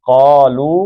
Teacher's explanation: قالو کا مد اصلی ہے، لو بھی مد سے دو حرکتیں ہیں